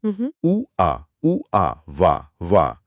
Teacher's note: उ और आ को तेजी से बोलने पर व की आवाज बनती है।